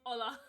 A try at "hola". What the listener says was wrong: Right, just please for me, once, just try the H.